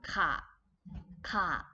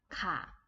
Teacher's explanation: high class plus short vowel sounds become low tone. Okay, so this one, for example, ข อ ไ ข ่ plus a sounds become ค ่ ะ with the low tone.